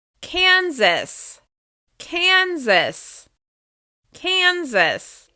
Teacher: As you can hear, this is stressed on the first syllable.